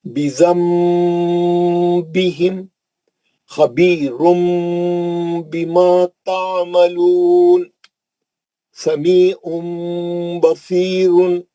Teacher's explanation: تنوین کے بعد با آئیں گی تو نون کی آواز کو میم سے بدل کر غننے کے ساتھ پڑھیں گے. اس کو بولتے ہیں نون ساکن یا تنوین کا اخلاب حرف با.